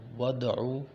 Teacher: دال جو ہے حروف قلقلہ ہے تو اسے ہلکا سا جھٹکا دیا جائے گا